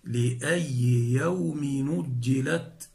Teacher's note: نحذف الهمز ونحرك الساكن بحركة الهمز وهي الضمة فتصير لأي يوم نجلت، لأي يوم نو، يوم نو، يوم نجلت،